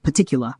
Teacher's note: BBC English, a non-rhotic accent, would pronounce it as particular, where the R sound is dropped and a schwa replaces it.